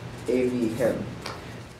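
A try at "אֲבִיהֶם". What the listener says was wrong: Evihem. And watch your segols that you don't make them all like Sares.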